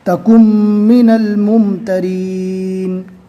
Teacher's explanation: تکن پڑھیں گے تو یہ غلط ہو جائے گا، کاف کو ڈائریکٹ میم سے ملانا ہے. اس لیے کہ اس سے پہلے ہم نے قاعدہ پڑھ لیا ہے کہ جزم والے حرف کے بعد تشدید والا حرف آئے گا تو جزم والے حرف کو نہیں پڑھا جائے گا، بلکہ جزم والے حرف کے پہلے جو حرف ہے اس کو ڈائریکٹ تشدید والے حرف سے ملا دیا جائے گا.